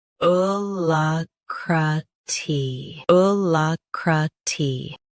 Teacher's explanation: Stress la. Keep cra soft, then tee clear.